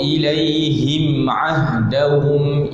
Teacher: huruf mim mati ni dia memang ada bunyi menghidung sedikit. Yang dimaksudkan dengan tidak ada dengung maknanya tidak dipanjangkan dua harakat di hidung.